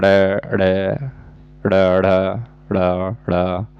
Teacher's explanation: जिनके उच्चारण में जीवा का आगे का भाग है वेग से ऊपर उठकर के मूर्धा से टकरा करके तुरंत उसी वेग से नीचे जाता है जैसे ड ऊपर टच हो के तुरंत नीचे जाता है। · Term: उत्क्षिप्त व्यंजन